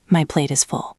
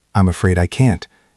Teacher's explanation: It sounded like a question. When you do the gentle refusal, your voice should go down at the end of the sentence. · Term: drop in pitch